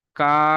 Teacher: এই কাফকে 3 আলিফ পরিমাণ টান দিয়ে পড়তে হবে